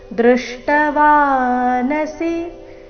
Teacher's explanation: ಇಲ್ಲಿ ವಾ ದೀರ್ಘ ನ ಮತ್ತೆ ಸಿ ರಸ್ವ ಬರಬೇಕು. ದೃಷ್ಟವಾನಸಿ ಈ ರೀತಿ ನಾನ ದೀರ್ಘ ಮಾಡಬಾರ್ದು.